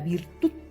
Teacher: el mayor golpe de voz está en la última sílaba es una palabra aguda así pero no se no se le · Por ejemplo, la palabra virtud termina en D, ¿no? Y el mayor golpe de voz está en la última sílaba